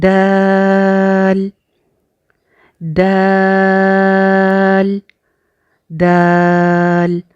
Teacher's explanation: دال جو ہے یہ سیم اسی مخرج سے نکلتا ہے جس سے تا نکلا تھا، یعنی اوپر والے دو دانتوں کی جڑ سے سیم وہاں سے دال نکلتا ہے۔